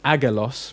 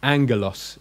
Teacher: When you got two gammas together, you pronounce it as in an NG. So you might have seen the word that looks like it's pronounced agalos, meaning angel or messenger. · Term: NG sound